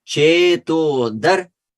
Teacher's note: the syllable dar, even though it has a short vowel, it is still a guru syllable